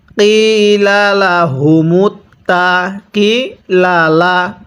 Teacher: কফের মধ্যে এক আলিফ টান দিব, জেরের পরে ইয়া সাকিন থাকার কারণে, কিন্তু এই দোনো লামের মধ্যে কোনো টান দিব না।